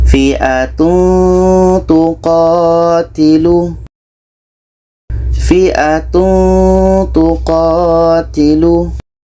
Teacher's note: Ketika kita menyebut tanwin, kita sudah merasakan huruf ta, sehingga ada bunyi eng di situ. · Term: ikhfa hakiki